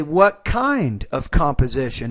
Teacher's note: I would put more emphasis on the word kind